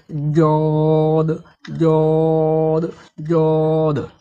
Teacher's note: জদ হরফের মাখরাজ হলো জিহুবার গোড়ার কিনারা, জিহুবার গোড়ার কিনারা এবং তার বরাবর উপরের দন্ত মারির সাথে লাগিয়ে জদ হরফকে মোটা ও কষ্ট করে পড়তে হয়